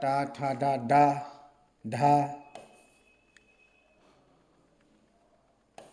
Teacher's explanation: ये सभी उच्चारण स्थान जो है मूर्धा से होते हैं